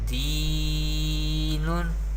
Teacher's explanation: we pronounce ya madda by stretching up to one alif or two harakat. And noon has tanween, do pesh.